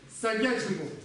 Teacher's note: В некоторых камских диалектах может произноситься как С, будет сагячимбо.